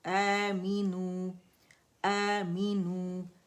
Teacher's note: اے حمزہ اقصى الحلق سے ادا ہوگا